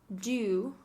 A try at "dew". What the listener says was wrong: So it's not do, it's dew with a Y in it. University. This is a Y, as in Yamada Huevo. or it's the double L or the Y in Spanish. Llover. Llover.